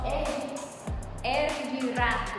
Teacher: a língua toca o céu da boca e vibra rapidamente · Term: vibrantes